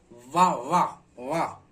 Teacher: नीचे का ओष्ठ ऊपर के दांत दोनों मिलकर, तो दंतोष्ठ, दंतोष्ठ, दंतोष्ठ हो जा रहा है।